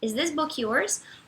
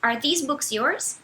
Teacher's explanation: no this o som é mais próximo do som de um E, enquanto no these o som é muito claramente de I